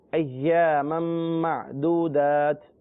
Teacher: اب میم پر 2 زبر ہے، تنوین ہے اور آگے بھی میم ہے، تو میم کا میم میں ادغام ہوگا، ناک میں آواز جائے گی